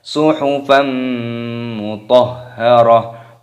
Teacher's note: fathah tanwin bertemu dengan huruf mim, hukumnya dibaca idgham bi gunnah. Cara membacanya yaitu dengan cara dimasukkan dan didengungkan. Suhufan mutahharah, mutahha, mutahha.